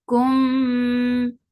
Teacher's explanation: your lips should be in a straight position and you're keeping this sound into your nose for a longer time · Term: idgham shafawi